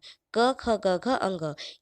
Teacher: ये क वर्ग जो है कंठ से उच्चारण होता है, यानी इन वर्णों का उच्चारण करते समय हवा गले में अटक के रुककर फिर बाहर आती है।